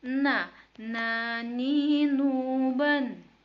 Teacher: huruf nun yang dikeluarkan dengan lidah terdekat menyentuh langit-langit bagian depan